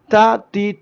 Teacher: തീ തു എന്നൊക്കെ പറയുമ്പോൾ ചെറിയ രൂപത്തിൽ ഒരു വായുസഞ്ചാരം കാറ്റ് ഇങ്ങനെ ശ്വാസസഞ്ചാരം നടക്കും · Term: ഹംസ്